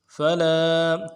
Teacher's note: فا کو نرم سے ادا کرنا ہے، لام کے بعد الف مدہ ہے، ایک الف دال میں کھینچیں گے۔